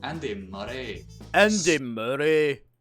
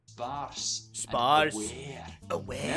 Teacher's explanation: Now you say every single R sound, but you tap it.